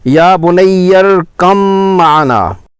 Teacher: با کو میم میں مدغم کر کے غنہ کے ساتھ پڑھنا